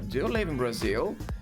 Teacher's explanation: Mas Brazil segue com a entonação crescente.